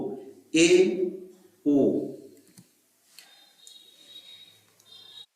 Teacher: अर्ध संवृत स्वर इनकी संख्या है दो